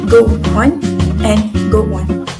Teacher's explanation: It is link phenomenon because she did insert a glide consonant sound which is W in her speech. The formal or the standard pronunciation for this phrase should be just go on but then she link it to go on.